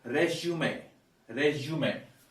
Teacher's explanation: The stress is here. This being a noun word, a content word, we stress the first syllable.